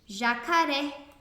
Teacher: Percebam que o ré é a sílaba mais forte e é a última, por isso ela é oxítona.